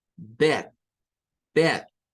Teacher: la E que está ahí suena como una E del español, el sonido E, bed, bed.